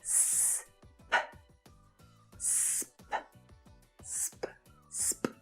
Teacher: We just need to train your muscles in your mouth to be more comfortable doing something a little different. S and P are both unvoiced consonant sounds, and the sound is made by pushing air through your mouth. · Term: consonant cluster